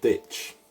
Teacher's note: the irish d is almost like the english one but you pronounce it with your tongue coming off of your front teeth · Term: broad d